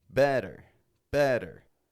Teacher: quickly flapping your tongue up and back down very quick kind of motion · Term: flap te